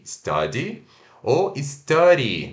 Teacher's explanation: pode ser substituído pelo som do r o nosso R não o puxado não or mas o r do português como caro